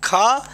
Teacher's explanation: कावर्ग जो है इसका उच्चारण स्थान का कंठ से है